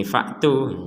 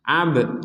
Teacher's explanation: ada ba sukun, kita bacanya dipantulkan. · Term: pentalan